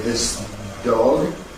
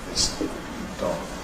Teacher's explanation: the voicelessness of the /s/ will typically slur over into the /d/, giving you a partially or indeed wholly devoiced /d/ in the word ‘dog’ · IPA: [ðɪs ˈd̥ɒg̥]